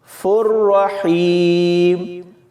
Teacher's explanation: را سے پہلے فا پر تنوین ہے تو اس کو بھی ہم بغیر غنہ کے پڑھیں گے